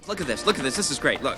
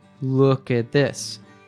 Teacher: Look at this, this is great, look. When a word ending with T is followed by a word beginning with TH, we usually drop the T so that it flows together. So says a smooth, "Look at this.